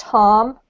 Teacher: If you pronounce it in the US accent, it's pronounced harm with an R.